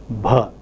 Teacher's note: voiced aspirated or murmur or breathy sound such as bh.